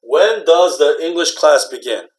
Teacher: For information question, the whole thing is just flat. Okay, maybe sometimes go down a little bit.